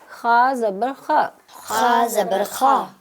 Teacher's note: حلق کا شروع والا حصہ جو منہ کے قریب ہے وہاں سے خا